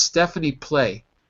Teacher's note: in Connected speech you're going to drop the z sound